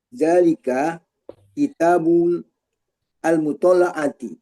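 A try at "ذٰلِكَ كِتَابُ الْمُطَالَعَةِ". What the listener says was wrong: Kalau sudah bul, jangan al lagi, nanti bualan jadinya. Kalau bul. Kalau sudah bul,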